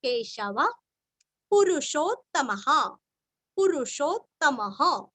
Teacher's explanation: विसर्ग का उच्चारण हल्का सा फ